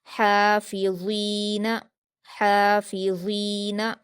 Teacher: ऊपर के 2 दांतों के किनारे से आपकी ज़बान की नोक लगेगी और नर्म आवाज़ आएगी, आपकी ज़बान की नोक थोड़ी बाहर आ जाएगी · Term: ज़ा का मखरज